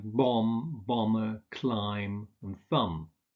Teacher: you don't pronounce the B in words like bomb, bomber, climb, and thumb. So although there's a B in the spelling, you don't pronounce it.